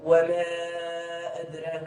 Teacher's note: حيت كاين المد في آخر الكلمة الأولى وفي البداية ديال الكلمة التي تليها عندنا الهمزة. إذا انفصل في كلمتين. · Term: مد منفصل